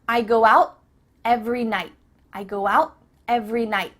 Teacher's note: your tongue is at the top of your mouth. You're about to make the T sound, but no air goes through, so it's just stopped at the top of your mouth. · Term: cut off the T